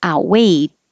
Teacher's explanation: I'm not really pronouncing the T like outweighed or the D. I put my tongue in the T position and hold it there.